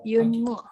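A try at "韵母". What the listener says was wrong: Bukan yun, tapi bacanya in. Inmu.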